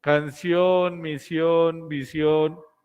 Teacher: el acento está en la última sílaba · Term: agudas